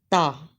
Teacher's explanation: ता को अदा करते हुए जबान का किनारा सनाया उलिया यानी सामने ऊपर के जो दो दांत है इनकी जड़ से लगे तो ता अदा होता है